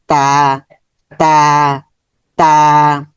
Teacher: এটার মাখরাজ হচ্ছে যেহবার আগা উপরের দাঁতের গোড়াতে স্পর্শ করবে।